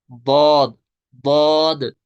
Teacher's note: ऊपर वाले wisdom teeth जो हैं उनकी जड़ के साथ जुबान की करवट लगती है, तो वहां से अदा होता है बौद, बौद। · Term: दाद